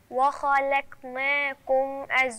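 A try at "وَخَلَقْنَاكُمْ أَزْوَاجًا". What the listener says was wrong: انا مش عايزاكي ترقق اللام وبعدين ترقق القاف يعني لازم انا اوزن ما بين الخاء والقاف واللام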